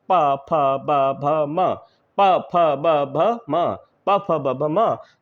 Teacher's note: दोनों ओंठ परस्पर जो है स्पर्श करते हैं। प फ ब भ म, प फ ब भ म, प फ ब भ म, तो इसलिए इनको कहा जाता है ओष्ठ्य व्यंजन।